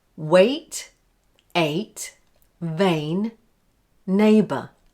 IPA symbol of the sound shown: eɪ